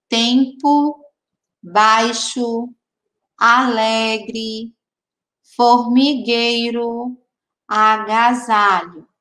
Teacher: A letrinha O e a letrinha E nessas palavras estavam fraquinhas, fraquinhas, fraquinhas. O O ficou com o som de U e a letrinha E ficou com som de I. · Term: Sons fraquinhos